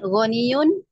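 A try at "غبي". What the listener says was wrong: Bumi pakai B, bukan Goni. Bukan Goni, bukan. Gobi, B.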